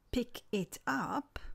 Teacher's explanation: concatenation, the last consonant of the first word is joined to the vowel sound at the start of the second word.